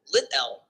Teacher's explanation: In some dialects, ambisyllabic consonant. The T sound can be considered both the coda of the first syllable lit and the onset of the second syllable